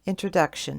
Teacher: The first syllable before the ending is your primary stress, and it does receive the most length of time for the vowel tone and the most volume.